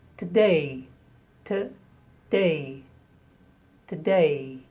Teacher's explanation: Stress on the day.